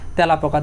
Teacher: খাঁটি বাংলা শব্দে খাঁটি বাংলা যখন শব্দ দেখ তখন এ ধ্বনি বিবৃত উচ্চারণ হয়। তখন মানে এ ধ্বনি যে উচ্চারণ আছে আমরা এ ধ্বনির উচ্চারণ এর মত পাবো না।